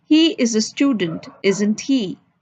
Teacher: the first part of the statement of a question tag is spoken with a falling intonation while the second part the tan is spoken with rising intonation